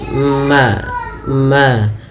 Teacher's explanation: mim termasuk daripada makhrajnya keluar daripada bibir kita, yaitu dirapatkan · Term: huruf mim